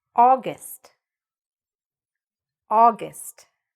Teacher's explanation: The stress is at the beginning.